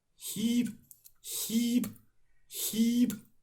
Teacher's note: So note that I'm not using vocal fry.